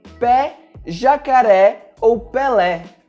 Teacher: Com o acento agudo, nós temos um som mais aberto